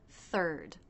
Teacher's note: This begins with the unvoiced TH sound, so the tongue tip must come through the teeth.